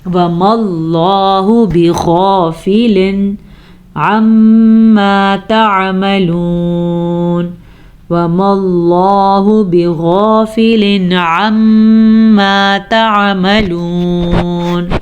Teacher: لفظ اللہ سے پیچھے والے حرف کے اوپر زبر ہوگی تو لفظ اللہ کو پر پڑھیں گے، اگر لفظ اللہ سے پیچھے والے حرف نیچے زیر ہو تو لفظ اللہ باریک پڑھیں گے، تو ہم نے اس کو پڑھا وَمَا اللَّهُ بِغَافِلٍ عَمَّا تَعْمَلُونَ، وَمَا اللَّهُ بِغَافِلٍ عَمَّا تَعْمَلُونَ.